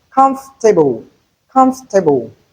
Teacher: In comfortable we have three syllables not four.